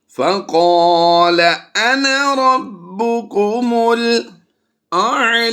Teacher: لفظ انا یہاں پر زبر کے ساتھ الف ہے تو اصول اس کے پڑھنے کا یہ ہے کہ اسے بغیر لمبا کیے پڑھا جاتا ہے. اس لفظ انا کو جب بھی یہ لفظ انا آئے تو یہ انا نہیں پڑھیں گے بلکہ اسے انا پڑھیں گے، یعنی نون چھوٹی کے ساتھ پڑھیں گے بغیر الف کے.